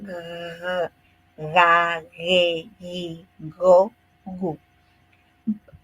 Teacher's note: la parte trasera el paladar se eleva ligeramente tocando el velo del paladar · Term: velares